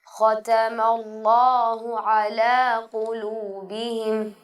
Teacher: اللہ کا لام سب سے موٹا پڑھا جانے والا حرف ہے · یہاں پر اللہ کا جو نام ہے اس میں لام کو آپ نے موٹا کر کے پڑھنا ہے